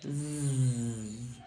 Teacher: That's a vibrating sound, so it's voiced.